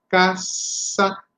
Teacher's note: la lengua va debajo de los dientes inferiores, casa, y hace una leve fricción.